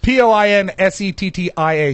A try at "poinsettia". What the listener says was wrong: No, the I is silent. It's poinsettia.